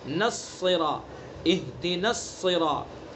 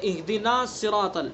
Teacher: نون کو فوراً صاد کے اندر ملائیں گے